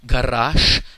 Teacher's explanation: Correct Russian pronunciation is garash, because the word final voiced consonant zh gets changed when pronounced to sh